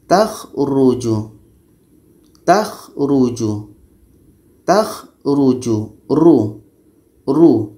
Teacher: surah al-kahfi ayat 5 di sini ro ro ini baris depan Maka ro ini dibaca tebal